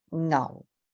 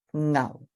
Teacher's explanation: It's your fourth low falling Ngao